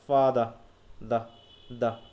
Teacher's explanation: ফাদারে আমরা আরটা উচ্চারণ করি না, করি কি করতেছি ফাদা দা দা, এই যে শেষের দিকে সাউন্ড হচ্ছে এটাকে আমরা দেখছি।